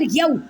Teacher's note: یا کو واو ساکن کے ساتھ ملائیں اور واو لین کا قاعدہ کریں، یعنی کہ نرمی سے پڑھیں